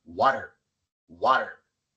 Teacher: Y como la t viene antes de la sílaba no acentuada y entre dos vocales, la a y la e, se pronuncia como r en español.